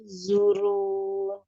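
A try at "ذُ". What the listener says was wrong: Nah, ini masih zurun ya. Jadi huruf zal ya. Zu. Naikkan pangkal lidahnya naik. Masih zu. Pangkal lidahnya naik. ujung lidah nempel di ujung gigi seri atas.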